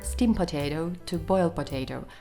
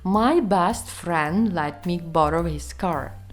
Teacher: Насправді дуже важко вимовити звук d, коли він стоїть між двома іншими приголосними.